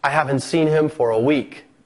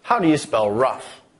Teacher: with the falling intonation we're indicating that we're finished speaking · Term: rise fall